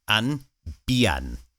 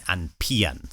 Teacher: So the P becomes a B sound.